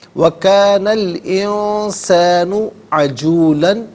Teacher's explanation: نون ساکن اس کے بعد سین حرف اخفا ہے، تو نون ساکن کو یہاں پر اخفا کے ساتھ پڑھا جائے گا۔ اخفا کہتے ہیں ناک میں آواز لے جا کر گنگنانا۔